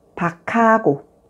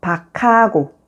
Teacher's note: 쌍기역 sounds like 키읔, and 키읔 sound becomes the initial consonant in the next syllable